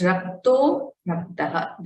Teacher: So this visarga has become okara.